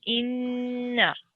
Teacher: This is a noon mushaddid. So that means that it needs to have a ghunna sound on it, which is a nasal sound.